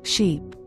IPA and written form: ʃip (Sheep)